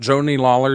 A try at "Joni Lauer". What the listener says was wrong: Did you just call her Joni Lawler? It's not Lawler. Lauer. Joni Lauer. Okay, yes, like Matt Lauer, not Lawler.